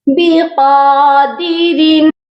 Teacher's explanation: قاف کے اوپر بھی کھڑی زبر ہے، قاف کو لمبا بھی کر کے پڑھیں گے اور موٹا بھی کر کے پڑھا جائے گا